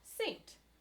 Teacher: you're sort of left with sant but this simple vowel this a becomes a diphthong · this simple vowel, this A, becomes a diphthong. It becomes saint, right? And so it develops into a diphthong here.